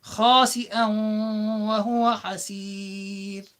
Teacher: There is a tanween followed by a waw, like I said at the start, and so the tanween sound, the nun sound within it, goes into the waw, and you apply ghunna because it's one of the ya, mim, waw, nun. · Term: idgham